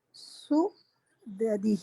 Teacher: حمزہ سین پہ جھٹکا ہے نا جی، اور سین پہ پیش ہے